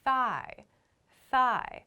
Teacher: all of these I'm like making the next vowel sound so my mouth is already moving to the next vowel sound as I'm making my th sound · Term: unvoiced th